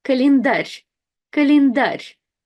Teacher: we have the soft sign at the very end. So the sound r changes to the soft r.